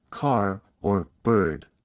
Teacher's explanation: American English is rhotic, meaning the R sound is pronounced clearly in all positions, like in words such as car or bird.